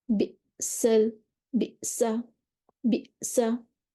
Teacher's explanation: जब आपने बिसा कहा, तो अब आपकी जो वोकल कॉर्ड्स हैं वो बंद हो गए। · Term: हमज़ा साकिना